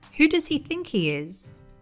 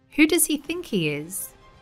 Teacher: in English, it's common to hear people dropping the H sound. So this sounds like, who does he think he is?